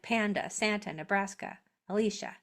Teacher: a at the end says uh that is the schwa sound. Uh is a schwa sound.